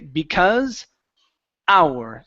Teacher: So, you don't want to say how. Go straight to the vowel.